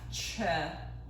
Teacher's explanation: anytime i put this apostrophe on top of the transliteration no that means there's a puff of air coming out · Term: aspirated version